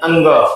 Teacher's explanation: अंग का जो उच्चारण स्थान होता है वो होता है कंठ कंठ प्लस नाक। अगर आप नाक बंद कर ले तो आप अंग बोल नहीं सकते। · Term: अनुस्वार